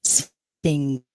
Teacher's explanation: you pronounce it when the tongue is retracted to the back of the mouth, like and it is the nasal cavity that is involved in the production of this sound. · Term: nasal sound